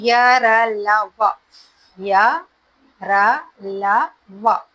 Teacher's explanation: जीभ जो है मुंह के किसी भी भाग को स्पर्श नहीं करती है, इसलिए इसे अंतस्थ व्यंजन कहते हैं। ये जो है कंठ, जीभ और तालु के योग से इसको बोलते हैं हम लोग, ठीक है, कंठ, जीभ और तालु के योग से इन चारों को बोलते हैं, ठीक है।